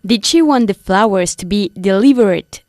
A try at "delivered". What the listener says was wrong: Delivered, not delivered. Delivered, okay? No decimos delivered porque el verbo to deliver no acaba ni en T ni en D, okay? Ni en TE ni en DE, con lo cual no pronunciamos la E final.